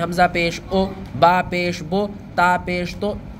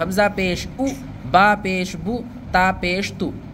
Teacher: پیش کو معروف پڑھا جائے، مجہول آواز سے بچا جائے ، یعنی کہ پیش کو مجہول نہیں پڑھنا ہے، جیسے کہ